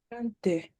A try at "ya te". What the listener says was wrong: Il n'y a plus de nasal. Ya te.